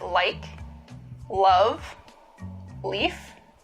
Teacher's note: new york latino english speakers have a particularly light l · One remarkable feature of this variety is a light L, the sound that you would find in a word like, love, leaf.